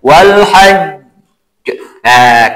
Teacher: ketika Jim mati di at tasdid itu harus dimasukkan baru dipantulkan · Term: Qalqalah